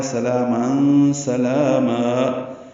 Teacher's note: قیلا سلاما میں سین صفیر کی آواز سے جلدی ادا کریں گے, لام پر کھڑا زبر باریک پڑیں گے اور دو حرکات لمبا کریں گے. تنوین کے بعد سین آنے کی وجہ سے اخفا ہے.